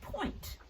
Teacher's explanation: You give a little puff of air with your lips while you point.